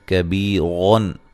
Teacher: کبیرن کاف کو باریک پڑھیں گے، بی یا مدہ